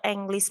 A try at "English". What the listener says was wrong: English. Jadi E-nya itu dibaca I ya, bukan baca E juga. English.